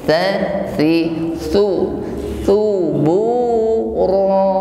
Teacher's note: huruf tha cara mengucapkannya yaitu dengan ujung lidah bertemu dengan ujung gigi sari bagian atas.